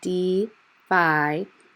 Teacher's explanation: segment it into three syllables like you see on the screen the first and second syllable are open syllables the e and the i are long